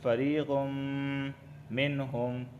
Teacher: تنوین کے بعد میم آیا ہے تو یہاں پر ادغام اور غنہ دونوں ہوں گے